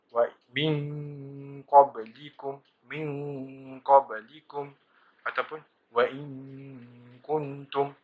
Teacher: Iaitu apabila nun mati atau tanwin bertemu dengan 2 huruf, iaitu qaf dengan kaf. Oleh kerana mahrajnya yang jauh, maka bunyi ifak itu hampir kepada bunyi izhar. Bunyi ifak adna juga ialah tebal.